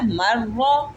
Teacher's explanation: اور را کے اوپر زبر ہے، اس کو موٹا پڑھیں گے